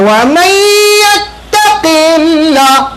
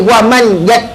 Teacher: Nun mati bertemu dengan ya, tak boleh wa man tak boleh. Nun tu mesti dimasukkan bunyi ya. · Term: idgham ma'al ghunnah